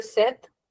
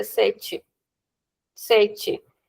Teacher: In European, we'll say set. In Brazilian, we'll say sete.